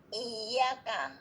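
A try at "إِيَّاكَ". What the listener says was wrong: Nah, bukan dipanjangkan, bukan iyyaka, tapi ditekan. I, seolah-olah kayak ada pantulan. I.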